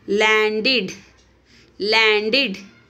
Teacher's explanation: Ed is sounds like id in this word.